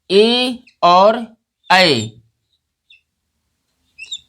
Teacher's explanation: दो वर्ण हमारे हैं जिनका उच्चारण कंठ और तालव्य से होता है, ए और ऐ। ये दो स्वर हमारे हैं, ए और ऐ दो स्वर हमारे हैं जिनका उच्चारण हम कंठ और तालव्य से करते हैं। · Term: कंठ तालव्य